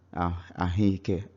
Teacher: E, which is one of the vowels, is overpowering O and forcing O to take the sound of E. So now instead of having O and E, we now have double E. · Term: vowel assimilation